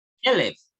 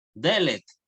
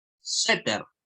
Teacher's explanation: el acento se marcará siempre en la primera vocal, o sea, en la primera sílaba en este caso.